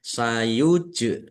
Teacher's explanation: jim sukun bacaan qalqalah dibaca memantul ditampakkan pantulannya